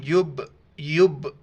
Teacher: یب ایک جھٹکے جیسی آواز پیدا ہو جاتی ہے، ساؤنڈ بیک کر کے چلا جاتا ہے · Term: قلقلہ